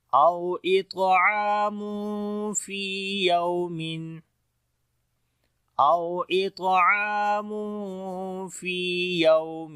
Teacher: تنوین کے بعد یعنی دو پیش کے بعد فا آ گیا اخفا کریں گے باریک والا